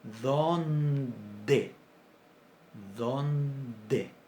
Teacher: D. Pero cuando tenemos una nasal adelante, se oclusiviza. Entonces decimos dónde.